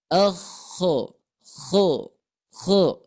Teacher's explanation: di sini ko mempunyai sifat istila istila Itu pang lidah terangkat makhrajnya berada di ujung tenggorokan kita ya paling atas tenggorokan kita bagian atas akho ko koho sehingga